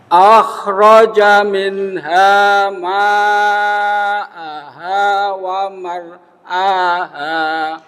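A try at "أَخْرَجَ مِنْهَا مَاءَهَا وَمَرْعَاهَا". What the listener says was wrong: Khoknya kurang. Rokwa, getarannya kurang. Ainnya kurang bagus di wamar aha itu ya. Wa mar'aha.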